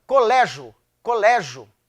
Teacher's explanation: Você engole o I, porque ele, coitado, é uma semivogal. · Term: ditongo crescente